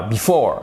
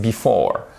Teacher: vous avez l'accent tonique au milieu du mot